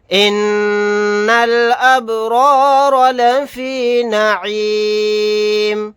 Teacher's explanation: نون مشدد ہے، یہاں پر غنہ کر کے پڑھیں گے، با ساکن ہے، یہاں پر قلقلہ کریں گے، یہ پہلا را اور دوسرا را دونوں کو پر کریں گے کیونکہ دونوں کے اوپر زبر ہے، میم کو ساکن بنا کر پڑھیں گے آیت کرنے کی صورت میں۔